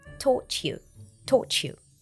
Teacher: The T at the end of taught links with the Y from you, and we hear the sound ch.